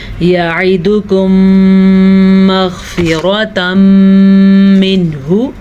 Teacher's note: یہاں پہ میم ساکن کے بعد میم آئے گا تو ادغام شفوی ہوگا, غنہ کر کے ہم تب پڑھیں گے